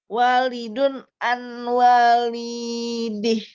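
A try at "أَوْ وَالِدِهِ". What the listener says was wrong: Wawunya ditahan. Au waladi. Masuk ke wawu langsung. Au. tidak dibaca Ibu. Masuk ke wawu ya. Au wa.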